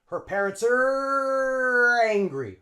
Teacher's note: the r links on to the a in angry